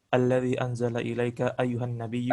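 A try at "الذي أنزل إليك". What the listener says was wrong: Ini bukan anzala ya, unzila ya.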